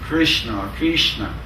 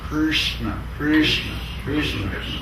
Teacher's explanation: Everyone tried to say it, and I said, Krishna, Krishna. Actually, there's no vowel after the R. · There's no vowel after the S and between the S and the R.